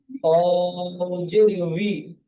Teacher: না বি হবে না ই হবে, দুটির মাঝখান দিয়ে উচ্চারণ হবে উই।